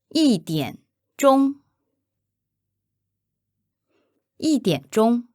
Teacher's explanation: together the tones are first third first